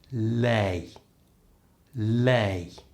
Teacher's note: The tip of the tongue is just stroking the back of my top teeth.